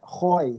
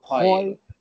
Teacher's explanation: Huruf kha tu huruf keluar daripada halqum.